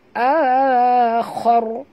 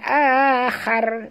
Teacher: Manakala ra bila kita matikan dia. Maka dia jadi tebal. · Bukan khar bunyinya tapi khor tebal.